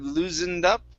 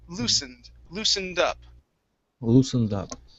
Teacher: the s in this word is going to be an unvoiced s